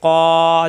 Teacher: ক জিহ্বার গোড়া থেকে এক আলিফ টান